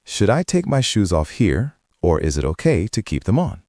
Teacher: It goes up at the end of the first clause and down at the end. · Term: intonation